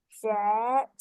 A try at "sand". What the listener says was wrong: Sand. Make sure you say the n sound first. Kena sebut dulu bunyi n, baru de. Okay, sand.